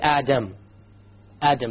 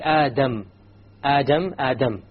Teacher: The difference is that the English D only uses the tip. Okay? So when you try to pronounce the English D, you only use the tip.